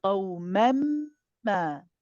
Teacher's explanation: You're going to replace the noon with a meme. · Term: idgham kamil